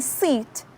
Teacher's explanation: lips are spread or kept apart as in a neutral position vowels like e as in seat are unrounded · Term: unrounded vowels